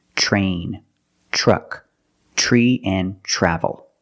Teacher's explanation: It will help you pronounce the R correctly, so you don't say train or tri. Use the ch plus the R, the voiced R sound.